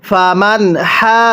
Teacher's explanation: আগে হা এর মধ্যে চার আলিফ টান দিব এরপরে হাকে জিমের সাথে লাগাবো